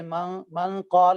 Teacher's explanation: زبان کے کنارے کو ہلکا سا دانتوں کے ساتھ ٹچ کریں، پھر ناک کی آواز کو، نون کی آواز کو ناک میں چھپائیں اور غنہ کریں، اور تھوڑا سا ما بعد اور حروف مستعلی کی وجہ سے غنے کو آپ موٹائی کی طرف لے جائیں.